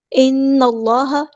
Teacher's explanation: ان اللہ، نون پہ ہونا زمانی ہو رہا ہے تو ہم نے ایک الف کے برابر رکنا ہے، نون کو لام کے ساتھ ملا دینا